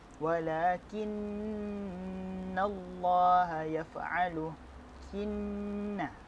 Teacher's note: nun mati berjumpa dengan nun ataupun nun syiddah dibaca secara dengung 2 harakat